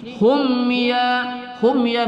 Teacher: mim sukun bertemu ya kita baca tidak berdengung pada izhar syafawi